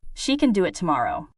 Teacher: The strong words are do and tomorrow. The others are lighter. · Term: rhythm